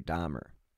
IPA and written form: ˈdɑːmər (Dahmer)